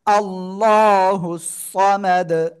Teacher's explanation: হা সদ পেশ হুস, আল্লাহুস, সদ জবর স, মিম জবর মা, দাল পেশ দু, সমাদু ওয়াকফ করলে দাল সাকিন কলকলা হবে